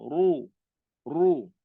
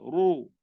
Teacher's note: Kalau baris depan ni, ra dia tebal.